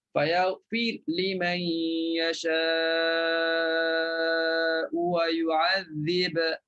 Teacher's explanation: Fayaghfir Wa yu'adzib, matikan huruf ra, matikan huruf ba. Bila matikan ba, maka di sini bagi bacaan Warash, dia kena baca dengan izhar. Kena bunyi qalqalah.